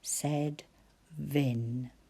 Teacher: Said Vin, and I can feel vibration, so I know it's a V and not an F